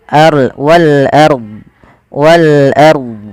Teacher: Ro tafkhim. Ro tafkhim, yaitu ro-nya dibaca dengan tebal